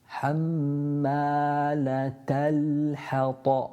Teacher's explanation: Ta, pronounced with the tongue touching the gums just above the central incisor at the top.